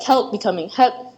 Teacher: there is a dropped l sound and words like help becoming help